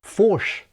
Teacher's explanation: Now, paradoxically, we can find in Scotland a different kind of retraction, where R affects not a preceding but a following sound. So in words like force, the RS sequence can create a retroflex sound